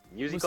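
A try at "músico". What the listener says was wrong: Musico. There's no there's no U sound in Spanish. It's ooh.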